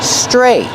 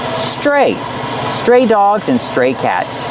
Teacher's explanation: We see the tr making the chch sound like chicken plus the r together.